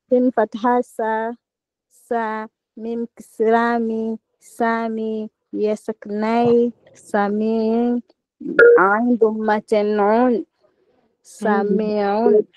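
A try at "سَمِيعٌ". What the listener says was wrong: Hii ni ye ya madda au ni ye ya sukun? Sasa hii ni ye ya madda. Ukiweka ye ya sukuni utakuwa umesema samiun. Hiyo itakuwa ya madda. Kwamba itakuwa ni samiun. Yani ina maana sin fatha sa, mim kasra mi, ya madda, sami, ain dhummatin un, samiun.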